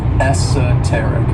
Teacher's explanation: this word has four syllables and the stress is on that third syllable